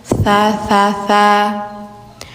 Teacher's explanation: lidah ujung tempel gigi atas